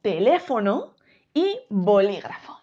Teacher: esta sílaba tónica no está en la última no está en la penúltima sino que está en la antepenúltima sílaba nos encontramos con palabras esdrújulas como por ejemplo teléfono y bolígrafo